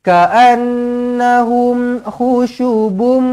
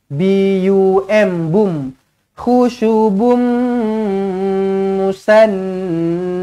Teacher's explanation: tanwin bertemu dengan mim sabdu, idgham ma'al gunnah, jumpa dengan mim sabdu, terus rapatkan bibir